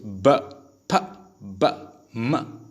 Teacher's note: जो दोनों लिप्स से मिल के साउंड प्रोड्यूस होती है उसको हम क्या कहते हैं, बिलेबियल. जैसे म, दोनों लिप्स ब, फ, ब, म.